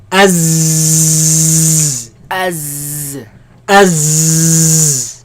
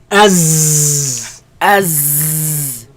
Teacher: There's a lot of commotion, a lot of air, a lot of movement of air between the tongue and the teeth.